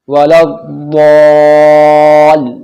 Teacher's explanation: حروف شمسی، اور حروف شمسی کے شروع میں الف اور لام لکھے ہوتے ہیں لیکن پڑھے نہیں جاتے، تو اب یہ جب ضاد حروف شمسی ہے تو اب یہ لام ضاد میں ملے گا ڈائریکٹ، نہ یہ لام پڑھا جائے گا نہ یہ الف پڑھا جائے گا